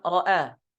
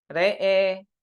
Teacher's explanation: Nah, sedangkan di riwayah Syu'bah bi imalati fathatir ra wal hamzati wal alif. Jadi dibaca Nah, re'e.